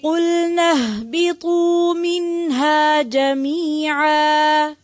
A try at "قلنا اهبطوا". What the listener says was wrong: اهبطوا واو ہے نا, اس واو کو پڑھیں گے, مارک کریں.